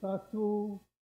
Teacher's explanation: But Hawaii, Tahiti, we just throw out the P and we say tatu